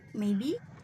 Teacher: falling first and then rising this pattern often express uncertainty hesitation or polite disagreement · Okay, the last, fall rise intonation. Falling first and then rising.